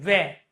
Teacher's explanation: जब आप व का उच्चारण करोगे प्यारे दोस्तों तो आपकी जो जीभ है वह कहां लग रही है? दांतों पर लग रही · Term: दंत ओष्ठ